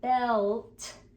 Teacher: they just don't hear the L it's quieter than the t